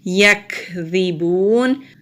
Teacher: یکذبون، کاف کے اوپر جزم ہے یعنی کہ سکون ہے، تو کاف کے اوپر جب جزم ہوتی ہے تو وہاں پر ہمز کا رول اپلائی ہوتا ہے، یعنی کہ سانس جاری رہتی ہے۔ جب ہم کاف کو ادا کرتے ہیں تو اینڈ میں ہلکی سی ہوا کے ساتھ ہم اس کو نکالتے ہیں تو اس کو ہمز کہتے ہیں۔